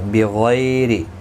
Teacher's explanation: را زیر کی وجہ سے باریک پڑھا جائے گا · غی یا لین ہے، تھوڑا نرمی کے ساتھ کھینچ کر ادا کریں گے. غین حروف مستعلیہ ہے، پر پڑھا جائے گا.